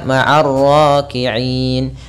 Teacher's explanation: Sedangkan di sini itu sukun arid pada lafal na, yaitu na-nya kita matikan karena kita waqaf sehingga kita baca ma'ar raki'in.